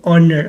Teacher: the word honor begins with a vowel sound। honor जो है आपका vowel sound से start होता है, therefore we use n, इसके साथ हम n यूज़ करते हैं।